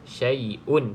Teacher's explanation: cara baca dengan izhar, iaitu jelas syai'un, tak perlu dengung.